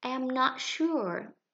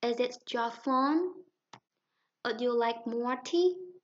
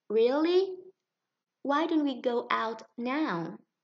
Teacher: Cần phải lên giọng ở cuối câu cho khi mà chúng ta không chắc chắn, khi chúng ta muốn hỏi, chúng ta muốn mời, hay chúng ta cảm thấy ngạc nhiên, hoặc là chúng ta gợi ý một điều gì đó.